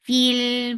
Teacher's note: Lam will get sifa of tawassut and tawassut is medium flow of sound